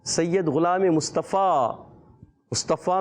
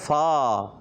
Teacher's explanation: ऊपर के दांतों के किनारे जब नीचे वाले होंठ के तर हिस्से से लगते हैं तो अदा होता है फ़ा